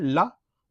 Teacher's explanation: पार्श्विक मतलब पिछला। तो जीभ का पिछला जो हिस्सा है दोनों तरफ का वो ला बोलने पे पीछे की तरफ हल्का मुड़ता है ऊपर की तरफ